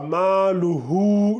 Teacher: c'est un mad bilwaw. Donc tu dois l'allonger en 2 secondes.